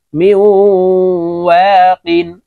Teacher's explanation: نغ فير لكم حطة نغ فير لكم ميم واو زر ميو নুন সাকিনের পরে ওয়াও আসছে, দেখুন ইদগামে বা গুন্নার হরফ ওয়াও আসছে, তাই এই মিম ওয়াওর সাথে গুন্নার সহিত পড়তে হবে